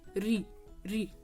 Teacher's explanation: कि कंठ से थोड़ा ऊपर की तरफ आओगे तो वहां पर जैसे आपने री बोला कहां पर आया पूरा का पूरा भार ऋ यानी कि आपकी मुर्धा पर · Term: मुर्धन्य स्वर